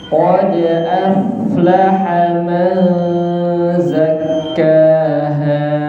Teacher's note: Qalqalah dal kita berusaha sebisa mungkin menghilangkan hamzahnya, kebiasaan baca hamzah setelah dal.